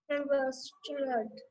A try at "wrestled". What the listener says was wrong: वेसल्ड नहीं, wrestled, W is silent, okay, wrestled बोलो, everybody repeat, wrestled, wrestled